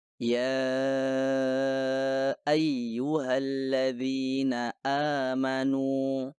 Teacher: pertengahan sebuah kata seperti kita membaca ya ayyuhalladzina amanu Anda seharusnya memastikan bahwa potongan suara Hamzah terdengar dengan cara menutup pita suara Anda sepenuhnya